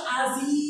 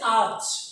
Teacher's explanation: শব্দের শেষে একটা ই ছিল, যখন হচ্ছে আজ, ইটা আর নেই। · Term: অন্তঃস্বর লোপ